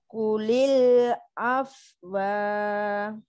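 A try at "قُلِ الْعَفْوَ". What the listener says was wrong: Nah, kalau wa itu kan disukun Ibu, kalau ada fathah ada kasrah. Ulil af. Oke, kalau berhenti di waktu itu ya. Kalau ada fathah, kasroh, duma, fathatain, kasrotain, dumatain, itu disukun Ibu. Ulil af, Jadi wanya cuman seperti isyarat maaf. Ulil ngoten mawon nggih. Yang lain di sukun dimatikan semua.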